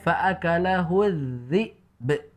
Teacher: Kemudian ada ba waqaf di situ sehingga kita sukunkan. Makanya kemudian kita baca dengan qalqalah karena ba sukun itu ada qalqalahnya sehingga dibaca be.